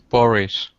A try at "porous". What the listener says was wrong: Yeah, but the last S is a S, not a sh. Porous.